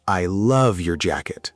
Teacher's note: The important words are love and jacket. Those words are louder and clearer. >> And the small words I and your, they are not stressed as much.